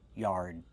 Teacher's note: Use the open Y sound like yellow and yesterday plus the R sound like car and far together. Yard and a stop D